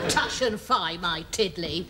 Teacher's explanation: I thought you could have a certain roundness, perhaps to the vowels